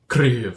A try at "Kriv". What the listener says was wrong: No, you don't roll the R, it's just Kriv.